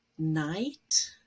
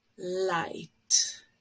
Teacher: when we make an N, the air passage to the nose is open, so you actually lower it. And when you make an L, you actually raise it and close the passage there so that no air goes through the nose.